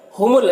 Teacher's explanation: हुमुल लाम में लाम साकिन है तो पीछे वाले मुतहर्रिक हर्फ मीम से मिलकर पढ़ा जाएगा